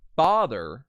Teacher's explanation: you put the emphasis on the fa of the word father. So you put that, all you have to do is put that little apostrophe mark there, and that'll indicate that you are putting the stress on that first syllable.